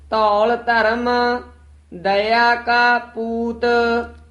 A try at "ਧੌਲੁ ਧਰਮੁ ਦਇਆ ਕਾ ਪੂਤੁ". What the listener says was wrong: ਈੜੀ ਦੇ ਸਿਹਾਰੀ ਲਾ ਕੇ ਬੋਲਣਾ ਹੈ, ਦਇਆ ਉਚਾਰਨ ਕਰਨਾ ਹੈ, ਦਇਆ ਨਹੀਂ ਕਹਿਣਾ। ਧੌਲ ਦੇ ਕਨੌੜਾ ਹੈ, ਧੂਲ ਨਹੀਂ ਕਹਿਣਾ ਹੈ।